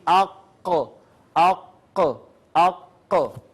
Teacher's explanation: کبے سے متصل زبان کی جڑ اور اوپر کا تالو ملے تو قاف ادا ہوتا ہے۔ آپ دیکھیں یہاں پہ ہمارا ایک کبا ہے یہاں پہ، اور اس کے ساتھ بالکل جو زبان جڑی ہے، وہ زبان کا حصہ جب اوپر تالو کی طرف اٹھتا ہے تو وہاں سے قاف ادا ہوتا ہے۔ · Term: قاف کا مخرج